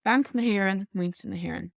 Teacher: there's a H there just because na ends in a vowel and Éireann begins in a vowel